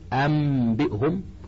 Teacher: قلب النون الساكنة والتنوين ميما قبل الباء مع مراعاة الغنة والإخفاء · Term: الإقلاب